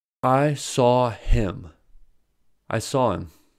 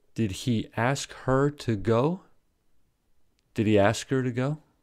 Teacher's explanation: if the H word does not begin a sentence when H is dropped the remaining vowel sound is linked to the preceding word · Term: H dropping